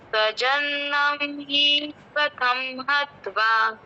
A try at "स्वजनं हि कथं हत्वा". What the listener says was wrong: स्वजनम ही आप थोड़ा लंबा बोल गए तो बड़ा ही हो गया। स्वजनम ही कथम हत्वा, ऐसा बोलिए। ये ही पे आप रुको मत। स्वजनम ही कथम हत्वा,